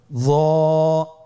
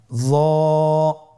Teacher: জিহ্বার আগা, সামনের উপরের 2 দাঁতের আগার সঙ্গে লাগিয়ে উচ্চারিত।